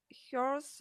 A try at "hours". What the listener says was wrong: without H, да, то есть мы не произносим х там.